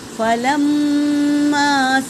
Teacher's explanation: میم پر تشدید ہے اور یہ الف مدہ ہے، تو اسے ایک الف کے مقدار کھینچیں گے